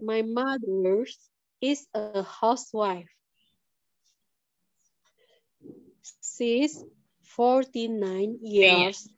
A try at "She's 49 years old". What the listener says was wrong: T-nya kurang, Miss. 9 pakai I. Old-nya diulang dulu, Miss. D-nya diulang dulu.